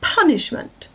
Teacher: it's punishment the other two are unstressed the first one the pun is stressed a little bit more